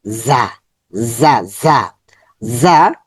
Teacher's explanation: এটা হচ্ছে জা, জা, জা, জা। জিহ্বার আগা নিচের দাঁতের গোড়াতে স্পর্শ হবে, একটু শক্ত হচ্ছে জা, রা, জা, রা, জা।